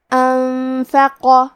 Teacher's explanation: تو ہم نون ساکن کو چھپاتے ہوئے اور غنہ کے ساتھ یہ حکم کو ادا کریں گے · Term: اخفاء